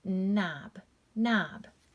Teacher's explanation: that's going to be pronounced with just the n sound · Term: silent k